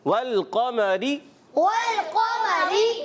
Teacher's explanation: واو کی ادائیگی ہونٹوں کی گولائی سے. لام ہلنا نہیں چاہیے.